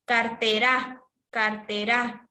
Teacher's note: Le voy a poner la mayor fuerza de voz a ra.